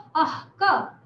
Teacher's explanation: क, प, इनको पहले जो विसर्ग आता है वो आधा इसलिए लिखा जाता है क्योंकि उसको अह क, अह तो पूरी तरह नहीं बोलते, अर्ध विसर्गा बोलते हैं इसको, ये अर्ध विसर्ग है, अह क।